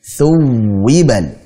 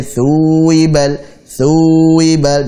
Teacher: Kita tekan wawunya di sini, waw tasydid kita nabr.